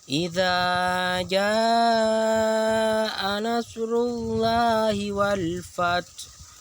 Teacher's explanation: Kalau sudah tek tek, berarti 2 detik pindah ke jaa. Di jaa itu ada 5 harkat, 5 ketukan.